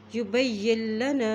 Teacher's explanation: या की ज़ेर लाम के साथ मिल रही है क्योंकि नून साकिन है, नून के ऊपर जज़म है और लाम के ऊपर शद है